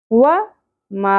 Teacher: अलिफ हर्फ मद्दा, एक अलिफ के बराबर खींचेंगे